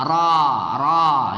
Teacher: ya tafkhim ditebalkan membacanya